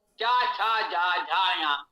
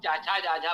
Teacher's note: जब आप चाचा जाझा बोलेंगे तो जिह्वा तालु की ओर जाएगी। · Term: तालव्य